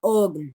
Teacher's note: Ahí en ugn lo que puede pasar es que justamente se asimile a la velar plosive y se vuelva la velar nasal